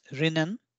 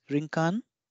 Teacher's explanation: all the L consonants have been replaced with R and additionally the r remains as r